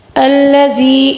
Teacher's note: ہے، الذی خلقک فسواک فعدلک، الذی اس میں یا مدہ ہے، یا مدہ کو ہم ایک الف کے برابر کھینچ کر پڑھیں گے